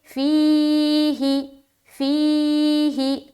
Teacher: فی کو ہم لمبا کر رہے، کیوں؟ کیونکہ یہاں پر ہم یا مدہ کر رہے۔ ہی کو ہم جلد ادا کریں کیونکہ یہاں پر ہم صرف زیر پڑھ رہے، اور زیر کو معروف بھی پڑھنا ہے، معروف کا بھی خیال رکھنا ہے۔